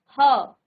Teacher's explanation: इसके बाद स्वर यंत्रीय, यानी कि स्वर यंत्र से आपका ह, जब आप ह बोलते हैं तो आपका जो दांत है, जो जीभ है, वो कहीं भी नहीं लग रही है, वो स्वर यंत्रों से निकल रहा है, ह, ठीक है।